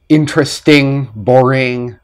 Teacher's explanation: have the G sound never never ever ever ever ever so any ing verbs or adjectives don't have the G sound interesting boring not interesting boring we do not pronounce the G